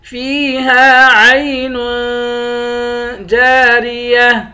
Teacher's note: فیہا عین جاریہ، جیم کے بعد الف ہے، الف حروف مدہ ہے، اس کو بھی ایک الف کی مقدار کھینچ کر پڑھیں گے، آخر میں گولتا ہے، گولتا پر جب وقف کرتے ہیں گولتا ہا بن جاتی ہے